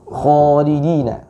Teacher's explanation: karena huruf kha ini termasuk huruf yang isti'la. Khalidina, ya, pangkal lidahnya terangkat. Ya, pangkal lidahnya terangkat.